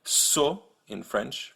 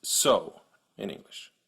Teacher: The biggest difference is that the American English variant is actually two vowels. You start at O and then you end at U, so you go so.